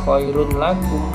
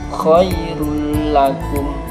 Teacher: tanwin bertemu lam, nggak boleh khairun lakum, harus digandeng, ditasdidkan menjadi khairul lakum. Jadi berbeda, kalau yang idgham biguna tadi harus ditahan dan mendengung, kalau yang ini tidak mendengung. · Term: idgham bila gunnah